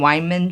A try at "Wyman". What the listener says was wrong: Wyman. sounded like saying Weinman.